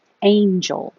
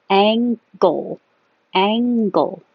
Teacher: So feel the difference in where your tongue is in the front for an N or in the back for an ng.